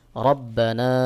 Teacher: এক আলিফ টান এর পরের শব্দের শুরুতে আলিফের আমজাহ থাকার কারণে এক আলিফের জায়গায় আপনাকে তিন আলিফ টান দিয়ে পড়তে হবে